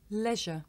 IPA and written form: ˈleʒə (leisure)